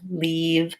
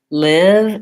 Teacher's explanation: engaged I'm smiling leave verses live is a lacs vowel my tongue is slightly lower more relaxed and my facial muscles are not engaged